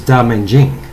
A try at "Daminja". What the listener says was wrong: Well, there's no G at the end, so it can't be Jing. Damajin. Because that's how it ends. A-J-N. Damajin. So that's the way I've always said it.